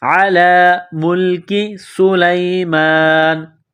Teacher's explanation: علی ملک سلیمان، میم لام پیش مل، کاف زیر کی، کاف کو باریک کرنا ہے · سین میں سیٹی کی آواز پیدا کریں گے، سین کو باریک کریں گے